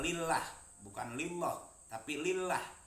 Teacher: Kalau tarkik berarti tipis, biasanya sebelum lafadz Allah berbaris kasroh. Contohnya lillah, bukan lillah tapi lillah, itu tipis. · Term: lam jalalah tarkik